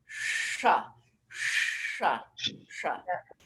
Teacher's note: It's really a sound in the 3rd mouth position, which means that the tip of the tongue is going to aim towards the hard palate, somewhere in the middle of your cranium. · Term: SH sound